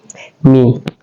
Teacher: mim adalah syafatain sekaligus dia adalah al-khaisun